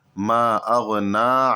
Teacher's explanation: ما اغنا، یہاں پر بھی مد ہے اور یہاں پر بھی مد منفصل ہے، کیونکہ ما میں مد ہے، الگ کلمہ ہے، اور اغنا میں جو حمزہ یہ الگ کلمہ ہے جو کہ مد منفصل کی پہچان ہے، تو اس کو 2 سے 3 الف کے برابر کھینچیں گے۔ اغنا میں نون پر کھڑا زبر ہے، تو اس کو 1 الف کے برابر کھینچنا ہے